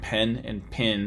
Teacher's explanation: in the American South and parts of the Midwest, or the vowels in words like pen and pin have merged because they tend to be passively nasalized.